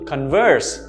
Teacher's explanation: notice the stress on the second syllable converse